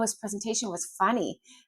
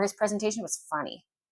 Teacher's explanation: I'm going up and I mean, haha, funny. Or his presentation was funny. So I'm going down, meaning it was weird. I didn't care for it.